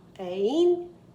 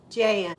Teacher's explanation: That way you don't have to worry about the vowel sound. Just start them both with A, but on Jane, you go up, Ain, and Jan, you go down, Jan.